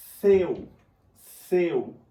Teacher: O meu E sai com mais intensidade do que o U.